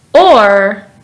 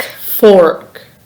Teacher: is voiced meaning your vocal cords vibrate when producing the sound your tongue stays in the lower middle part of your mouth and your lips are rounded when pronouncing the sound or · the sound or is voiced meaning your vocal cords vibrate when producing the sound your tongue stays in the lower middle part of your mouth and your lips are rounded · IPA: /ɔːr/